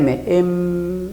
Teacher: nota que se juntan los dos labios es un sonido bilabial